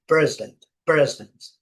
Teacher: Essa também nós já falamos dela, né? A primeira sílaba é forte